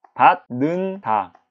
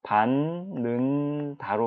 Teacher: 디귿이 니은으로 바뀌었어요. 디귿이 니은으로 바뀐데 가장 큰 영향을 미친 친구는 누굽니까? 바로 뒤따라오는 요 니은인 것이죠. 이 비음, 핵인 쌓인 이 비음 니은 때문에 디귿이 니은을 사랑하여 동경하여 닮고 싶어서 얘도 똑같은 니은으로 바뀌는 거예요. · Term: 비음화